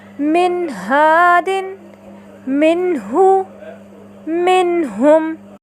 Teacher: آپ نے دیکھا ان تینوں مثالوں میں نون ساکنہ کے بعد حرف ہا آیا تو ہم نے نون ساکنہ کو اس کے مخرج اور صفات کے ساتھ ظاہر کر کے پڑھا